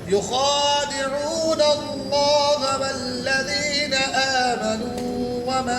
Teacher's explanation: लफ्ज़ अल्लाह से पहले ज़बर है उनके ऊपर, मोटा पढ़ेंगे